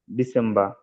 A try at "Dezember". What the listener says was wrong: না ডিসেম্বর, ত হবে, না ত আসবে, ডিসেম্বর, ডিসেম্বর। দাঁড়ান আমি আপনাকে উচ্চারণটা শোনাই, হ্যাঁ। বুঝছেন, ডিসেম্বর, হ্যাঁ ডিসেম্বর, হ্যাঁ এরকম উচ্চারণ, ডিসেম্বর, হ্যাঁ এবার উচ্চারণ করেন